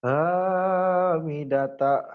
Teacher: Ha. kurang keluar ya. Hanya agak ngambang. Kedengarannya kayak A. Padahal H.